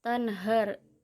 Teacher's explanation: idhar halki karena ada nun mati bertemu dengan huruf ha, cara bacanya terang dan jelas di mulut